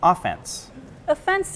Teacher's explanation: you might put the stress on the beginning